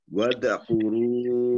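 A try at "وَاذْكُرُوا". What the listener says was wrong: Wadzkuru tidak dimantulkan ya. Wadzkuru.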